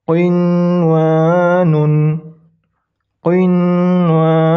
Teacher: Nun dibaca jelas, waw dibaca jelas, tidak dilebur. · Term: izhar